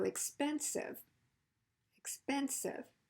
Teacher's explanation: Now we know that the second to the last syllable is stressed because remember when we add an I suffix like IVE, it's the syllable right before it.